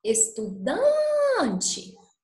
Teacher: Dan foi a sílaba que eu fiquei mais tempo, que eu precisei de colocar mais força. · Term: sílaba tônica